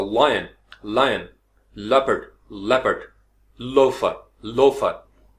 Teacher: तो जुबान के दोनों तरफ से आवाज निकल के ऐसे जैसे बुलबुला निकलता